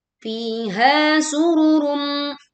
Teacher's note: Fiha sururum, fi dan ha panjang 2 harokat. Sururum, dengungkan, domah tanwin bertemu mim. Jangan tergesa-gesa karena ini bunyi dengungnya terdengar sempurna ya.